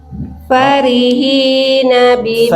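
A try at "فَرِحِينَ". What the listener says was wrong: Fa bukan pak, fa.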